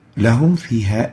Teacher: We have to clearly expose the pronunciation of the Meem and the fa, where both letters has to be exposed. They have to be pronounced as clear as they are written. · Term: idhar